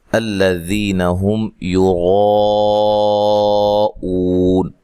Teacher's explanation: 3 سے 4 الف کے برابر یہاں آپ مد کر سکتے ہیں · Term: مد واجب